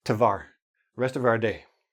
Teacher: Now, the hour, ow, we just squeeze into ah. Now, because we're making it quick, everything blends into each other.